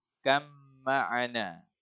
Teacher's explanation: Okey, kita tak boleh baca kab ma'ana. Kita tak boleh, kita kena idghamkan dia jadi masukkan pada huruf mim terus. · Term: idgham mutaqaribain